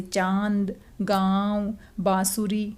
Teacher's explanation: जब आप बोल के देखेंगे तो आपको पता चलेगा कि हवा हमारी नाक और मुंह दोनों से निकल रही है। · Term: अनुनासिक